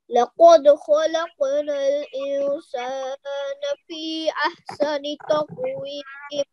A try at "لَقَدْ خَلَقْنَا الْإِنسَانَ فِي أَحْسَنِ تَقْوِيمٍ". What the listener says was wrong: Excellent. Just make sure that you prolong